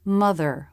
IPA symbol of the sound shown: ɹ